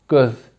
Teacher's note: Bizde ise G arkada olduğu için Ö de merkezi biraz arkada. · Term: Merkezi Ö